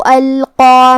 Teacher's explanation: یہاں حرف القاف ہے، قاف کی ادائیگی زبان کے جڑ اور تالو کے نرم حصے سے ہے. قاف حروف التفخیم میں سے ہے، تو ہمیں یہ حرف کو موٹی آواز میں ادا کرنا ہے